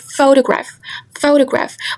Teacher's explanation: we can hear more emphasis in the word fu. So the stress falls on the syllable fu. · in the word photograph, photograph, we can hear more emphasis in the word pho